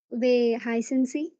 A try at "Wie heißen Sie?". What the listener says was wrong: വേ അല്ല വി വി.